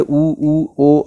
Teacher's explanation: ओंठों की स्थिति के आधार पर स्वर दो प्रकार के होते हैं, एक होता है अवृत्तमुखी और एक होता है वृत्तमुखी। वृत्तमुखी में ओंठ होता है वह गोलाकार हो जाता है